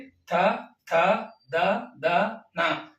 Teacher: ಹಲ್ಲುಗಳನ್ನ touch ಆಗಿ ಹಲ್ಲು ನೆಲಗಲ್ಲಿ touch ಆಗಿ ಉಚ್ಚಾರಣೆ ಮಾಡತಕ್ಕಂತ ಅಕ್ಷರಗಳು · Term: ದಂತ್ಯ ಅಕ್ಷರಗಳು